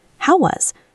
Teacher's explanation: notice how the words how and was often blend together. It almost sounds like one word.